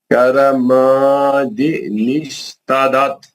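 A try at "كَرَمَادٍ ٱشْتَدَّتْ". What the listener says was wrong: تدت نہیں تد دت دال کو دو بار پڑھو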